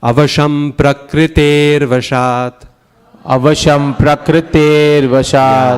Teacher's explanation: And then the prakriter, E-A is always long. So make it nice and long.